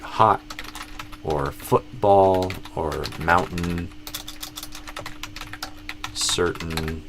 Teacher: And then you could also have a glottal T